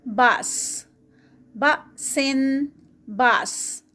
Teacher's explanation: حمزہ کے اوپر جزم آ گئی ہے تو یہاں پر حمزہ کے اوپر جرک ہوگا. باس، بأسن، باس، اور اینڈ پہ سین کی آواز جب اس کو روکیں گے.